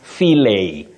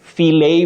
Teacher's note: Fillet without pronouncing the T.